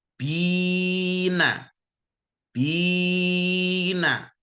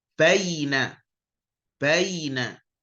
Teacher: Tapi kalau ya sukun didahului fathah, tidak panjang tapi jadinya bunyinya baina.